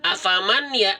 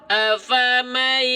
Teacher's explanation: itu disertai dengan dengungan, jadi agak sengau, seperti masuk ke hidung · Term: idghom bi gunnah